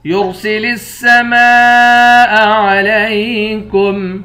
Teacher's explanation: یرسل السماء علیکم را کو موٹا پڑھیں گے۔ میم کے بعد الف ہے، اس الف پر مد ہے، اس مد کو 5 الف کے مقدار کھینچ کر پڑھیں گے۔